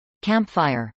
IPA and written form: kˈæmpfˌaɪɚ (campfire)